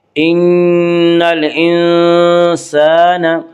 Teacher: الف لام اگر حروف قمری کے شروع میں ہوں تو صرف لام پڑھا جائے گا، الف کو نہ پڑھیں گے